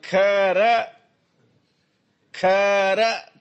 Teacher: खरं खरं त्या खला थोडस वाढवलं, प्लुत करायचं.